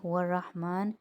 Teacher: رحمان میں را موٹا، میم پہ کھڑا زبر ہے تو ایک الف کی مقدار کھینچے گا۔